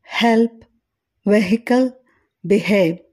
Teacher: దీనిని పలికేటప్పుడు గ్లోటల్ ప్రమేయంతో గాలి బయటికి రావడం గమనించవచ్చు